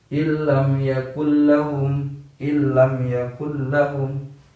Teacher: suara nun mati atau bunyi nun mati langsung lebur ke dalam huruf lam tanpa berdengung, ke dalam huruf lam dan ro. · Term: idgham bila gunnah